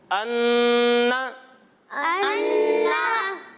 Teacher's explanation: तो इसके बारे में है कि गुन्ना नाक में आवाज़ ले जाकर पढ़ने को कहते हैं। यानी जब नून मुशद्दद हो या फिर मीम मुशद्दद हो तो उसे हम नाक में आवाज़ ले जाकर पढ़ेंगे